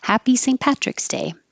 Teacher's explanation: Hap and Pat both have the same ah. So open and keep your lips back.